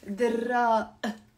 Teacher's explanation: it's very common to not pronounce the qaf in Levantine Arabic or in the Lebanese accent.